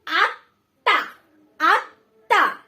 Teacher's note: আত্মা ডাবল উচ্চারণ হচ্ছে তযুক্ত ময়ের সাথে যে বর্ণটি রয়েছে